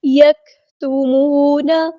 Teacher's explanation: مد آئی ہے تو مد اصلی کریں گے، دین یکتمون، کاف ساکن میں ہمس کی صرف شو ہوگی ، یک نہیں، یک، آواز کو دھیما کر دینا اور سانس